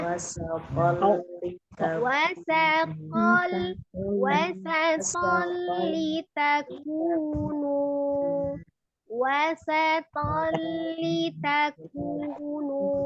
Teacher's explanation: huruf waw pertama tidak ngangkat, tidak diangkat, tidak dicepatkan, tapi dimonyongkan dulu ke bibirnya